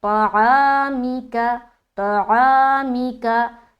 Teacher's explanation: मी और का बारीक हर्फ है और जल्द भी अदा करना है, बस खास ख्याल ये रखे कि मीम के नीचे क्या है, जेर है, और जेर मजहूल ना होने पाए। · अब यहाँ पर देखिए तो मोटा हर्फ है और आइन की अदायगी हलक से करना है